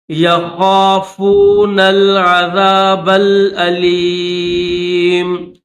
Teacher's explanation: آیۃ للہ، آیۃ للذین یخافو، یہ جو ہے یا ہے، اس طرح یہ جو مڑی ہوئی ہے نا، یہ یا ہے، یا کے نیچے 2 نقطے ہیں، اور اس کے ساتھ یہ خا ہے، خا کو موٹا کریں گے